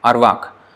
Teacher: So that is ending with k. So that is an unvoiced consonant. It's not g, it's k. K is unvoiced.